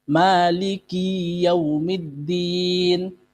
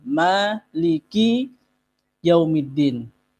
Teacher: Maliki dipanjangkan dijadikan mad thabi'i